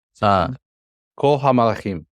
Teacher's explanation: So there would be no break between the kol and the ha.